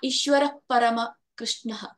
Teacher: ಈಶ್ವರ ಪರಮ ಕೃಷ್ಣ, ಅಲ್ಲಿ ನಮ್ಗೆ ಹ ಅನ್ನೋ ಉಚ್ಚಾರ ಬರಬಾರ್ದು. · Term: ವಿಸರ್ಗ